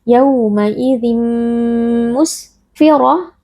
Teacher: Ra huruf tafkhim kita baca dengan tebal dengan mengangkat pangkal lidah karena di sini huruf ra berharakat fathah. · Tanwin diidghamkan atau dimasukkan ke dalam huruf mim lalu dibaca dengan berdengung. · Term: idgham bi gunnah